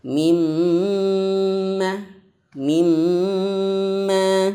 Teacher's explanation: mim nun bertasydid itu harus betul-betul lama, lebih lama daripada mad tabi'i. · Mim dan nun yang bertasydid kadarnya itu lebih lama. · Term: gunnah akmal